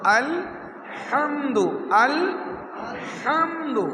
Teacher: জিমের পরের হা, ওই হায়ের নাম হচ্ছে হায়ে উক্তি, যেটা গলা চিবিয়ে কণ্ঠনালীর মাঝখান থেকে উচ্চারণ করতে হয়। আল হামদু, সবাই বলি আল হামদু, গলা চিবিয়ে বলতে হবে আল হামদু, আল হামদু, গলা চিবিয়ে বলতে হবে।